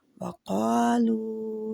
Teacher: قالو دونوں ہی دو حرکات کھینچے جائیں گے۔ آگے والا بھی مد لیٹر ہی ہے، لو جو ہے۔ · قا کا الف بھی موٹے حرف کا الف بھی موٹا ہوتا ہے۔ قالو دونوں ہی دو حرکات کھینچے جائیں گے۔ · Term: مد اصلی